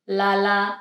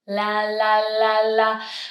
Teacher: When I make the L sound, I'm creating like a lot of space between my tongue and the pallet or the roof of my mouth. So only the very tip touches and I have a lot of space. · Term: light L